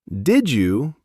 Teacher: Did you becomes did you would you becomes would you? It's like the D and the Y had a baby and named it J.